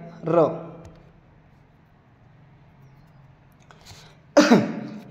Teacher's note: र या वर्णाचा उच्चार करताना कंपन होते म्हणून याला कंपित वर्ण असे म्हणतात